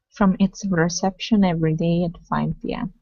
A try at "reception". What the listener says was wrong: Instead of it's, okay, and rolling the R, it's reception. From its reception every day.